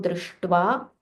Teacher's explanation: sh, again rolling your tongue, and it is a Mahaprana. You have to give a little more breath.